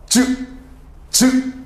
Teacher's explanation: 허파에서 소리가 팡 터지면서 어 입에서 마찰이 일어나는 소리가 지읒이 됩니다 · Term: 파찰음